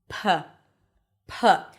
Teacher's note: The P sound is produced with the lips closing. The air pressure builds up and then you release the air with a puff.